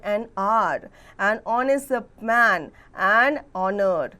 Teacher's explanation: The beginning H is silent in these words.